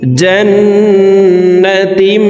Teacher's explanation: জিম নুন জবর জান, নুন জবর না, তা মিম দুই জেরে তিম, ইকলাব গুন্না। তানউইনের পরে ইকলাবের হরফ বা আসছে, এই কারণে এই ছোট্ট মিম দ্বারা পরিবর্তন করিয়া গুন্নার সহিত পড়ব